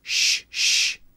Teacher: when we said the sh, sh in mushroom, it stops, right? The voice stops. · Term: unvoiced